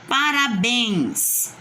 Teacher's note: O bens é a mais forte. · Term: oxítona